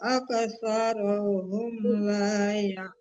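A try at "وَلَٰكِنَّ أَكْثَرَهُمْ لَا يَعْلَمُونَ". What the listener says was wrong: Kalau kaf kecil itu nggak boleh dipantulkan ya Bu, cuma ada hamasnya ya. Walakinna jangan ak. Kalau ak itu dipantulkan namanya ya, tidak huruf qalah itu huruf kaf kecil. Cuman hamas itu maksudnya nafas kita berbunyi itu aja gitu. Ada hawa gitu, nafas gitu. Ak, jangan ak. Nah, kalau ak itu kafnya yang Ibu matikan ya. Matinya ya mantul gitu maksudnya.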